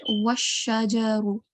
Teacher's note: the jeem, don't prolong it for more than 1 second, the sound of jeem, because it only has the short stroke of fatha. Okay, so it should only be 1 second long.